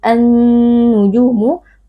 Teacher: idghamkan ke dalam Nun dan karena Nun ini menjadi bertasydid annujumu maka berlaku hukum ghunah jadi wajib kita baca dengan dengung